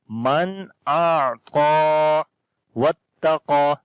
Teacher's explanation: Ta we read in light sound, qaf we read again in heavy sound due to isti'la letter, and also we long when we stop. · ta we read heavy sound, and also we long